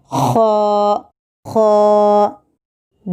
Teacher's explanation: حلق کے ابتدائی حصے سے یعنی جو منہ کی طرف والے حصے سے نکلتا ہے